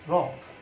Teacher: অধ্বনির সংবৃত উচ্চারণ ইংরেজি রক শব্দের অ এর মতো।